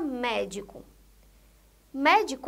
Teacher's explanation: médico a sílaba tônica é a primeira sílaba